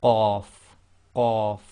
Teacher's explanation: So this is the one that comes from, again, with the blocking of the air first and then releasing when you say qaf, qaf. And it's one of the tafkhim letters again, plus it's qalqala.